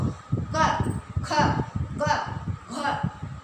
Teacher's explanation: क, ख, ग, घ जो है कंठ से बोले जाएंगे।